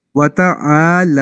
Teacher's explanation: جی وتعالی، آ بھی لمبا ہونا ہے اور لا بھی لمبا ہونا ہے، اس کو چھوٹا نہیں پڑھنا. عین الف زبر آ ہے، یہ حروف مدہ جو ہم نے ابھی کل لاسٹ سیشن میں پڑھے ہیں.